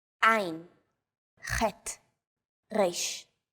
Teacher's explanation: 3 of these letters are pronounced deep in the throat. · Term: guttural letters